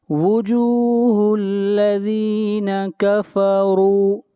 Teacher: را کو موٹا پڑھیں گے، را کے اوپر پیش ہے